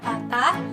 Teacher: Bunyi rendah. Bunyi yang dihasilkan dengan cara posisi lidah merendah sehingga jauh dari langit-langit keras.